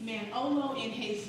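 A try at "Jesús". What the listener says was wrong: You don't pronounce the J.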